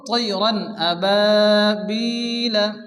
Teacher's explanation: এখানে আমাদের যে আওয়াজটা আছে তানবিনের আওয়াজটাকে জাহির করে তাড়াতাড়ি করে পড়তে হবে।